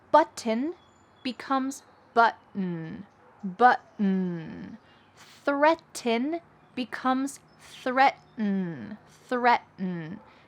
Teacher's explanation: if there is a T plus N sound at the end of a word, we drop the T and kind of swallow that sound